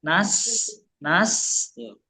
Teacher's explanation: Kalau sin ini dia mengalir secara sempurna. Dalam arti kalau kita bicara soal durasi, dia harusnya lebih panjang ya. Nas tuh. Dan dia ada desisnya sin itu.